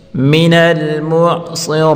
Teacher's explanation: مِنَل معصرات صاد اور را دونوں کو پر پڑھیں گے۔